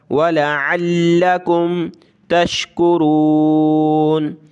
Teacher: हदाकुम वलअल्लकुम तशकुरून, वलअल्ल, लाम को सख्त करेंगे, आइन को गले से निकालेंगे, आइन लाम ज़बर अल, लाम ज़बर ला, वलअल्लकुम तशकुरून।